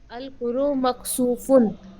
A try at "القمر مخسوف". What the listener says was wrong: القرو نہیں ہے، یہ القمرو ہے، میم چھوٹا ہوا ہے یہاں پہ. القمرو. میم بڑھا دیں گے یہاں پہ. القمر مخسوف.